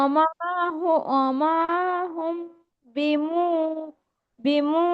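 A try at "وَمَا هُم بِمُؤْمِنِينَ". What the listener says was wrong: না, মিমটা টান হবে না, নুনটা টান হবে, নুন ইয়াজের নি। ওয়ামা হুম বিমুমিনিন।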